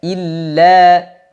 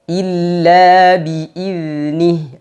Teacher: Lam tasydid tekan sedikit dan dipanjangkan 2 harokat.